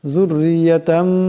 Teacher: এখানে তনবিনকে মিম দিয়ে বদলায় পড়তে হবে, এটাকে কলব বলা হয়